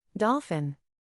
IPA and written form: ˈdɑːl.fɪn (Dolphin)